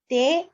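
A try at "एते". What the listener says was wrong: Ete, not te. Ete ke. You're using ete.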